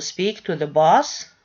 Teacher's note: boss you see here we are putting the nucleus address and the rising tone on the last word in the sentence in the question which is boss